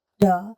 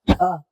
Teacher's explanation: ट में हवा नहीं निकलती, ठ में मुंह से हवा निकलती है, जब ठ बन जाता है।